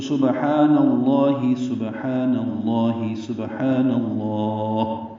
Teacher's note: لام کو دو حرکات لمبا کریں گے اور ہا کی زیر پڑھیں گے